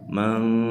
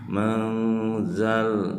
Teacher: Hukum bacaannya adalah ikhfa ya. Ini harus disamarkan, mendengung ya, masuk ke setengah hidung.